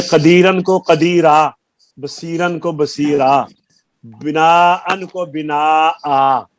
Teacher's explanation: ان دو زبر کی تنوین الف سے الف کی آواز دیتی ہے جب ٹھہرے